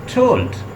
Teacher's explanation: आप टोल्ड कह के देखें और टोल्ड will be produce through the tip of the tongue when your tip of the tongue touches टू your alveolar ridge. टोल्ड, ड और ठा दोनों साउंड जो हैं वो एल्विलर रिज को टच करती है आपकी।